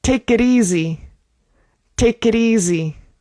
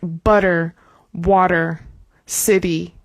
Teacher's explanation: The T, like I said before, here is a flap T, which sounds like an English D and a Spanish single R. You're taking the tongue d and just flapping it on the top of your mouth.